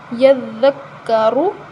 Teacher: اب یہاں ذال نرم ہے، یہاں زا تھی، یہاں ذال ہے، تو یہ نرم ہے تو ہم اس کو نرمی کے ساتھ پڑھیں گے، اور رو کے اوپر پیش ہے تو ہم اس کو موٹا پڑھیں گے